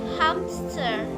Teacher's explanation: For the example, when we pronounce the word hamster at the regular speed, most of us will say and hear hamster with a P.